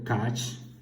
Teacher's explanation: the consonant which is voiceless, palatal, alveolar, affricative.